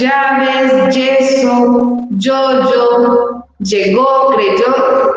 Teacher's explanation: el fonema doble L ha desaparecido y las letras Y y doble L se pronuncian únicamente con el fonema Y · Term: yeísmo